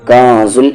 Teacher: اخفا ہو رہا ہے، نون ساکن کے بعد زا ہے